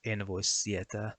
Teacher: Once again, a word that should begin with a short S sound now begins with a long one. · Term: long S sound